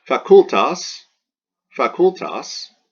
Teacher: Well, it doesn't have a macron over it, and it's not followed by two consonants, or an X or a Z. So this is a short penult, and the accent wants to jump back to the antepenult.